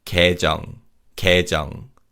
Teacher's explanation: the vowel 예 in the first syllable weakens, so it's pronounced like 에